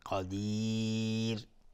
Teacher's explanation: قدیر قدیر قدیر اینجا اگر توقف قدیر مد عارض السکون به مقدار دو یا چهار یا شش حرکت میتونیم مد بدیم و را هم حکمش ترقیق است چون قبلش یا واقع شده. را را حکمش ترقیقه چون قبلش یا واقع شده